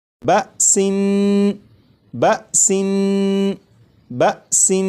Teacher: یہاں پر دیکھیں یہ لفظ لکھا ہے بسن، اس لفظ کو اب میں پڑھوں گا 2 مرتبہ، اس کے بعد 4 مرتبہ آپ پڑھیے گا، اور پڑھتے ہوئے اس بات کا خیال رکھیے گا کہ سین کو جب میں پڑھوں گا تو سین کی جو تنوین ہے، جب تنوین کی ادائیگی کروں گا تو نون کو پڑھتے ہوئے زبان تالو سے لگا کر پڑھوں گا